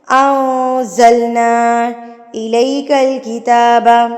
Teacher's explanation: کھڑی زبر کو آپ نے 2 حرکات کے برابر کھینچ کے پڑھنا ہوتا ہے, اور 2 حرکات آپ کاؤنٹ بھی ایسی کریں گے.